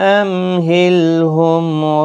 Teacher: میم ساکن کے بعد ہا ہے، اظہار شفوی ہوگا